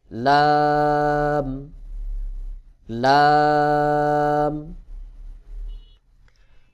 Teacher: জিহ্বার আগার কিনারা সামনের উপরের দাঁতের মাড়ির সঙ্গে লাগাইয়া লাম উচ্চারণ হবে